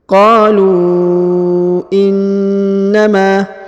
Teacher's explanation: huruf lu dipanjangkan 5 harokat karena di atasnya terdapat tanda panjang 5 harokat ya, garis yang ini.